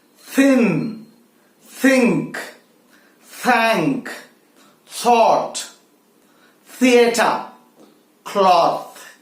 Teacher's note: hey there let's now look at the fifth pair of consonants the fifth voiceless consonant the tip of the tongue has to come between the teeth